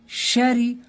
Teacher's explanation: را کو باریک کر کے پڑھیں گے کیونکہ را کے نیچے زیر ہے